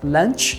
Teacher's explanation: Cuidado também com esse som aí do CH, que sempre vai ter aquele som do T